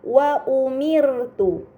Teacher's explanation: terdapat ro sukun sebelumnya harakat kasrah maka ro tersebut harus dibaca secara tipis